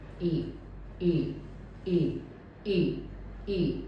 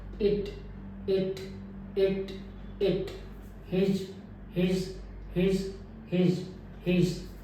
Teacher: रहेगा और फ्रंट से माउथ से प्रोड्यूस की जाएगी साउंड और इसमें भी लिप मेरे राउंड नहीं होंगे परंतु ये स्ट्रेच भी नहीं होंगे लिप खींचे नहीं रहेंगे मिडल ऑफ द टंग है वो थोड़ा सा छत की ओर · होंगे परंतु ये स्ट्रेच भी नहीं होंगे लिप खींचे नहीं रहेंगे मिडल ऑफ द टंग है वो थोड़ा सा छत की ओर उठेगा परंतु फिर भी ज्यादा नहीं उठेगा ई की तुलना में कम रहेगा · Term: रिलैक्स वावल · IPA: ɪ